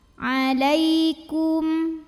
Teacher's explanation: tak anginnya keluarnya belakangan untuk tayang sukun Huruf Lin karena ada ya sukun yang didahului baris fathah cara membacanya cukup kita lembutkan saja